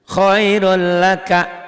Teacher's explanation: Ditulisnya ada N-nya, dibacanya N-nya hilang. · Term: idgham bila gunnah